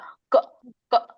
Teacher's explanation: ಈಗ ಕ ಅಂತ ಹೇಳಿದಾಗ ಇದು ನಮ್ಮ ಚಿಕ್ಕ ನಾಲಿಗೆ ಇರುತ್ತದಲ್ಲ ಅಲ್ಲಿ ಬರುತ್ತೆ ಶಬ್ದ